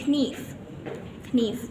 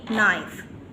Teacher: huruf vokal panjang I digantikan menjadi diftong I sehingga pengucap pelafalannya saat ini menjadi Naif nah [Musik] eh itu